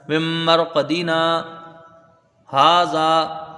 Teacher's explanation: نون ساکن کے بعد یرملون کا میم ہے، تو یہاں ادغام غنہ کے ساتھ ہوگا۔